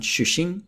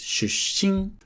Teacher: Watch the double consonant ‘shusshin’. It's not ‘shushin’, it's ‘shusshin’.